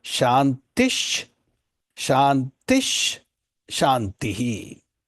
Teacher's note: That Usarga has to be included. But when you chant the two words together, because of the presence of the Visarga, there is a Sandhi, a conjoining of the letters.